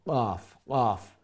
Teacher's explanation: জিহ্বার একেবারে শেষ অংশ, যে সময় উপরের তালুর সাথে গিয়া লাগবো।